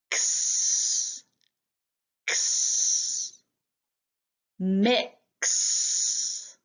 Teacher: We use the back of our tongue, our throat, and also the front of our tongue to say X, X.